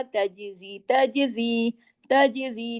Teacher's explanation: जीम पे कलकला हो रहा है, हिला के पढ़ रहे हैं मखरज के ऊपर